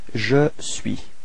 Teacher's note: So you can notice that the final S is not pronounced.